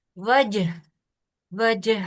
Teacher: جیم کو نارمل نہیں پڑھنا، کلکلا کے ساتھ پڑھنا ہے. یہ کتبو جدی یعنی یہ حروف کلکلا میں سے ہے نا، یہ با کے علاوہ جیم بھی، ٹھیک ہے.